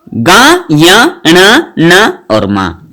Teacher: वर्ग का आखिरी अक्षर नासिक्य वर्ण कहलाते हैं जो नाक से बोले जाते हैं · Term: नासिक्य व्यंजन